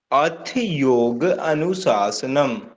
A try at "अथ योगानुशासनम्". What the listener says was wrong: अब आपने इसको बोलना अथ योगानुशासनम। ऐ नहीं आएगा, इसमें आ बन जाएगा।